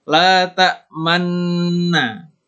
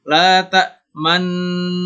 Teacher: cara bacanya adalah dengan memonyongkan bibir ketika mengucapkan huruf nun double-nya itu, nun gunnahnya itu. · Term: ismam